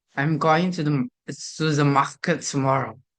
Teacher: Every syllable is pronounced distinctly with no reduction. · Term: equal emphasis on all syllables